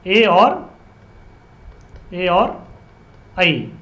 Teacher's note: ए और ऐ का उच्चारण स्थान क्या, कंठ तालु